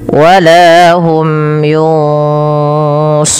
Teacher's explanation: kita boleh membaca runnya sepanjang dua 4 atau 6 harokat, tapi kita ambil yang tengah-tengah saja, tidak terlalu panjang, tidak terlalu pendek. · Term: mad arid disukun